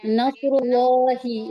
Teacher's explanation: दूसरे लाम पे खड़ा जबर है तो इसे हम खींचेंगे, और तशदीद भी है, और हा के नीचे जेर है, तो हम सकते हैं नस्रुल्लाही इस तरह पढ़ेंगे।